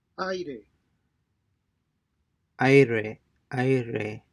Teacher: Diphthongs occur when an unstressed I, U, or Y ending appears next to another vowel in the same syllable. Their vowel sounds do not change, but they blend together to form a single syllable. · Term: diphthong AI